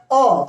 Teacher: मुंह खुलने के बाद जीभ का जो मध्य भाग का प्रयोग हो रहा है उसे हम मध्य स्वर कहते हैं। जैसे मध्य स्वर जो होता है क्या होता है, अ होने पर क्या हो रहा है, मुंह खुल जा रहा है।